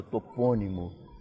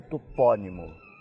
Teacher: seguinte maneira suponhamos que fosse topônimo é uma palavra proparoxítona que nós outros no Brasil pronunciamos com a sílaba fechada topônimo e os portugueses com a sílaba tônica aberta topónimo